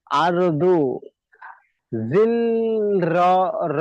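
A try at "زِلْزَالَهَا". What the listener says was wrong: যা, সবগুলো যা আছে, র নেই কোথাও। জিলজালাহা।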